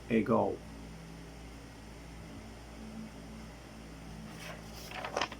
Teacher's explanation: According of the place of articulation, it is velar. According of manner of articulation, it is stop.